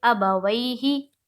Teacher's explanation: زیر کو جلدی پڑھیں، تھوڑا بھی نہ کھینچیں، معروف پڑھیں، مجہول آواز سے بچیں